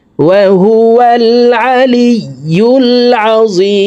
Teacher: তিন আলিফ টেনে মিমকে সাকিন করে ফেলবো কারণ মদর হরফের বামের হরফে ওয়াকফ হইলে মুদ্দা আরজি তিন আলিফ টেনিয়া পড়িতে হয়